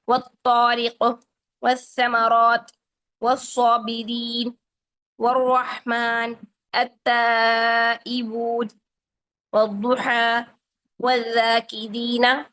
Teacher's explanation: ان حروف شمسیہ کی موجودگی میں لام ال موجود تو ہوتا ہے لیکن پڑھا نہیں جاتا ہے، مدغم ہو جاتا ہے ، یعنی اس کو غائب کر دیتے ہیں، لکھا ہوا موجود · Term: ادغام شمسی